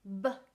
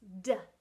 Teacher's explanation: b at the lips versus d behind the teeth